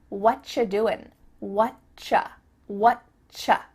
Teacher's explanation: we've cut out completely the word are, and the word you just becomes cha.